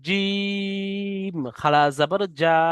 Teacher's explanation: খাড়া জাবর লাগিয়ে যখন আমরা পড়বো তখন জিমটাকে আমরা এক আলিফ পরিমাণ টান দেবো।